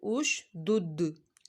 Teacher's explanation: دال حرف جو ہے کلکلا کا ہے، اس کو آپ نے کلکلا کر کے پڑھنا ہے